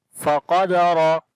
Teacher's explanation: Qaf and Ra we read in heavy sound.